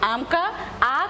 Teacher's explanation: लेकिन जब किसी स्वर का उच्चारण करते समय मुंह सबसे ज़्यादा खुलता है तो कब खुलता है, आ कहते हैं तो, है ना, जब हम आम का आ कहते हैं तो हमारे लिए मुंह सबसे ज़्यादा खुलता है, इसलिए आ जो है वो हमारे लिए आता है आपका विवृत स्वर।